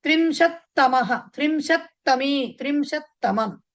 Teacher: త్రింశత తకారంతో ఎండ్ అవుతుంది కదా పక్కన తమః కాబట్టి ఒత్తి పలకాలి దాన్ని